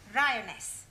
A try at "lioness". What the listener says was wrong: No, L, L. Well, in future, every time you see an L, pretend it's an R, right?